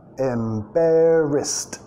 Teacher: la ED en este caso termina con sonido T